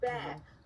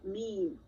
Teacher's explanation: One of them having the explosive sound off of it, ba. The other, they have a gentler sound off of it, meme, right?